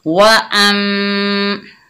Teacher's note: हमज़ा के ऊपर ज़बर, आगे मीम मुशद्दद, हमज़ा को मीम मुशद्दद के साथ मिलाकर गुन्ने से पढ़ेंगे